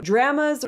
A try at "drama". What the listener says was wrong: No, not drama. Drama. Drama. Draw. Ah sound. Ah. Not eh. Ah. Not eh.